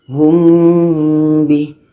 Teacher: kita pastikan mim mati itu bertemu ba, dan setelah itu baru kita baca dengan dengung 2 harakat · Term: ikhfa syafawi